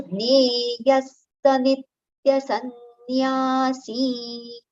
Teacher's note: the visarga sound is partial sa, halanta sa, and followed by complete sa